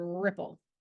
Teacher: between the tongue and the hard pallet but air flow is not significantly obstructed allowing for the resonant liquid like sound